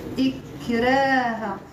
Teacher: لا اكراه لا اكراه نعم ممتاز اذا لا اكراه اكراه اذا هذا الكسر مع الساكن حرف الساكن هي اللي عطتني ترقيق الراء